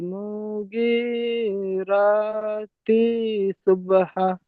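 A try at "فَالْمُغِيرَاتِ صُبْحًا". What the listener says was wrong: ফাল মুগি, মিম পেশ মু একদম টান হবে না। মিম পেশ মু একদম টান হবে না। ফাল মুগি, মু, মু টান হচ্ছে কেন? ফাল মুগি, মুগি বললেন না। মুগি, হ্যাঁ ফাল মুগি, মুগি টান দেন, কয়েন টান দেন। ফাল মুগি এরকম হচ্ছে কেন? মু টান হয়ে যাচ্ছে কেন? ফাল মুগি।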